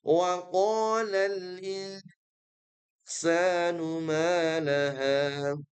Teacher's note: Di sini hurufnya aman, tetapi fokus di hukum tajwid yaitu ikhfa haqiqi. Nun mati bertemu dengan sin ya, dan dia punya sifat dengung yang dipanjangkan. Jadi samarnya perlu dipanjangkan.